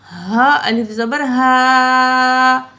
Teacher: ہا جو ہوتی ہے گلے کے نچلے حصے سے ادا ہوتی ہے